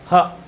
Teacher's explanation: ह जब बोलोगे तो लगेगा इसके कंठ के नीचे से आवाज, अंदर से निकल रही है आवाज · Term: स्वर यंत्र